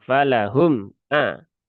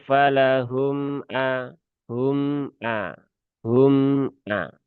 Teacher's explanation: Kalau falahum ajrun, nah itu sifat dari mim sukunnya berubah ya. Mim sukun tidak punya sifat syiddah. Dia punya sifatnya itu adalah tawasub ya.